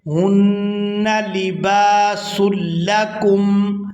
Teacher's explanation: ہن یہاں نون مشدد پر غنہ کریں گے،